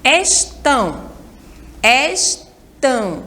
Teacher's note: Então, a sílaba mais forte é a última. Estão. Estão é a última sílaba.